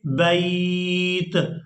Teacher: با یا تا زبر بیت. یہاں پر مد عارضی ہو رہی ہے, مد کریں گے یہاں پر, یعنی کھینچ کر ادا کریں گے